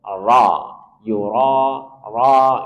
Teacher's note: Kemudian di kata ini yuraun sebelumnya dah kemudian dia berharakat fathah maka dia harus dibaca tafkhim tebal